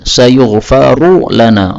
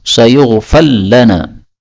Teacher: ra ketemu lam boleh idgham, sayughfal lana